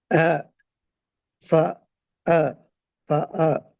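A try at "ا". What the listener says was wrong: இது இங்க வந்து இது அலிஃப் அல்ல. நான் உச்சரிக்க சொன்னது அலிஃப். இங்க வந்து இது ஆயின். நீங்க ஐனுக்கு போறீங்க. அலிஃப்ல இருந்து ஐனுக்கு போகல. பேசிக்கொண்டீங்க அலிஃப் தான். அலிஃப் த சவுண்ட் உங்களோட பிழை.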